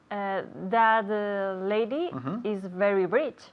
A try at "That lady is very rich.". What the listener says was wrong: Good. That lady is very rich.